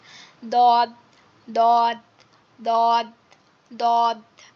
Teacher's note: এটা হচ্ছে জিহ্বার গোড়ার কিনারা উপরের মাড়ির গোড়ার সঙ্গে লাগবে